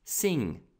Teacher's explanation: това е носово н произнася се н с гърба на езика този звук ще чуете например накрая на думата sing пея този